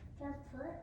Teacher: Now I want you to accent the second syllable. Compute. Not compute, compute.